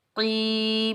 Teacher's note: آ، قاف حروف مستعلیٰ میں سے ہے تو قاف کو ہم موٹا پڑھیں گے، کاف کے نیچے زیر، آگے یائے ساکن ہے، قاف کو ہم یائے ساکن کے ساتھ ملائیں گے، یہ یائے مدہ ہے، اس کو ہم ایک الف کی مقدار کھینچ کر ادا کریں گے۔